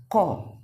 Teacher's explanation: pangkal lidah ditempelkan ke atas langit-langit